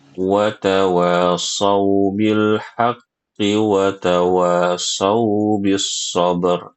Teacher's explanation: Huruf shadnya itu harus disempurnakan ya Bu ya, isti'lanya ya dan itbaqnya agar tidak terdengar seperti baca huruf sin ya.